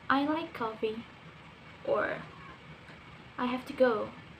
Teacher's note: First is falling. It's to giving an information.